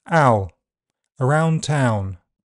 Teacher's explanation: In general British, the sound starts open and central or slightly to the front and moves to a near close near back position. Rounding is possible in the second part. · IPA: /aʊ/